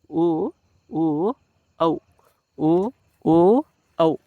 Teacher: ಆಗ್ತವೆ ಇನ್ನ ಕಂಟೋಷ್ಟ್ಯ ಕಂಟೋಷ್ಟ್ಯ ಕಂಟ ಮತ್ತು ತುಟಿ ಉಷ್ಟ ಅಂದ್ರೆ ಏನು ತುಟಿ ಕಂಠ ಮತ್ತು ತುಟಿ ಎರಡರ ಸಹಾಯದಿಂದಲೂ ಹುಟ್ಟುವಂತ ಅಕ್ಷರಗಳು